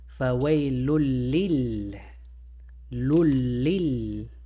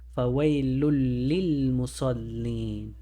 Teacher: The lam is going to eat the noon, and now we say fawailul lil. We don't pronounce the noon, it goes into the lam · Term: Idghaam